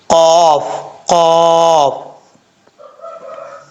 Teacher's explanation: اس کا مخرج ہے 2 نقطوں والا جو قاف ہے، اس کا مخرج ہوتا ہے زبان کی جڑ اوپر والے تالو کے نرم حصے سے لگے تو قاف پڑھا جاتا ہے